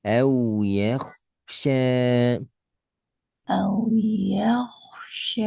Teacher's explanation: Kho-nya betul, ya-nya pendekin.